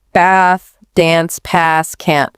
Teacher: Instead of that short a sound like in cat, it's often a longer, more open a sound. More like the a in father.